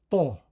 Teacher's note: the Arabic is pronounced as a pharyngalized emphatic